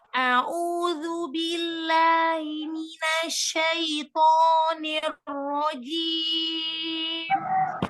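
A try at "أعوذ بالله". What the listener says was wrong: Lagi. A'udzu, rendahkan suaranya. Suaranya rendah tetapi keluar.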